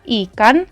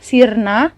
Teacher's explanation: I yang disertai dengan tanda titik didistribusikan pada suku kata terbuka, sementara I yang terdapat pada suku kata atau silabel-silabel koda atau suku kata tertutup direalisasikan dengan I besar